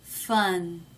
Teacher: it's quite clear that the tongue tip is raised touching the roof of the mouth